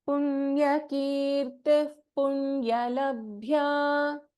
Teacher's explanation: And then in Punyalabhya, we have Bha which is Mahaprana.